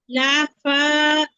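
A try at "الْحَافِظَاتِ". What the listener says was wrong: লা না আপু, হামজা লাম জবর আল।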